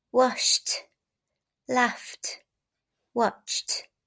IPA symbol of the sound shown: t